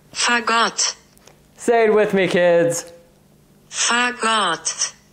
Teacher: notice the emphasis is on the second syllable, right? Rather than the first.